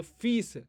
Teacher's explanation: वहां पे इ को थोड़ा सा लंबा किया जाता है ह्रस्व के मुकाबला में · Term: दीर्घ